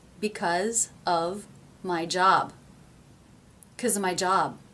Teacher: of are so unstressed so reduced and low in pitch that the word job is able to really jump out of the sentence